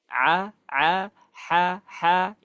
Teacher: suaranya tipis dan seperti ee terjepit keluarnya. Nah, untuk yang tidak mau mengikuti proses itu akan ngambil jalan pintas dengan cara dialirkan dari hidung.